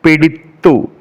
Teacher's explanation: നാക്ക് പല്ലിൽ തട്ടുമ്പോഴാണ് താ പറയുന്നത്. പിടിത്തു. അതുകൊണ്ട് ത എന്ന് പറയുന്ന അക്ഷരം ദന്ത്യത്തിലാണ് വരുന്നത്.